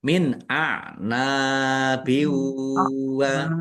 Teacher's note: Nun sukun bertemu dengan huruf alif. Bacaan izhar dibaca jelas.